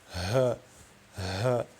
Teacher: prononcer le ha de billahi qui sort du fond de la gorge et ne pas du torse, ce qu'on appelle zafir, qui donne ha, ha.